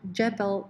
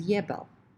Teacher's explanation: optional lenition into y, so that, for example, jebel can be realized as yebel